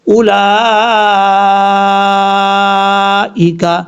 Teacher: یہ مد جو ہے یہ مد متصل ہے، اس کو 3 الف کے برابر آپ لمبا کر کے پڑھ سکتے ہیں